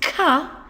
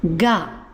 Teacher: Now what we have to do when we add a ten-ten is reduce the amount of air which we're pushing out of our mouths. So instead of an explosive ka, it becomes a gentle ga